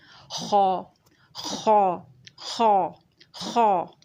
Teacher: अब देखिए, भारी हुर्फ़ में सबसे पहला हुर्फ़ खौ हमने ले लिया है। खौ जो है वो भारी हुर्फ़ है और इब्तिदाई हलक़ से अदा होता है। ग़ुर्राने के मकाम पे खर्राटे की आवाज़ आती है।